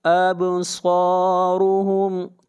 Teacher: اب با کے اوپر قلقلہ کریں گے، آواز کو ہلائیں گے